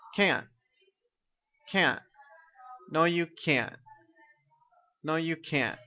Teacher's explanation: the negative the n and the t are not pronounced and the sound stops